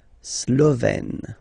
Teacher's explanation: Remember, E accent grave, you open it